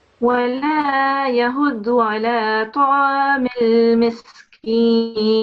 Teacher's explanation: pronounce this ta with a fuller mouth, with a round mouth. And then this mad kabira you have to pronounce more than 5 seconds, 5 to 6 seconds.